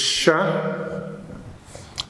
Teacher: you will feel that the front of the tongue touches the area next to the alveolar Ridge or I would say the beginning of the hard palate shall